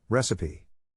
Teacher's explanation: To pronounce recipe, have in mind that the size of the syllable indicates where the accent or stress is. In this case, the accent is in the first syllable, corresponding to res.